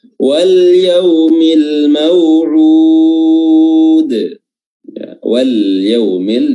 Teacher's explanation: Ya, wal yaumil, di sini ada alif lam dan ketemu ya, namanya alif lam al-qamar, ya, lamnya dibaca jelas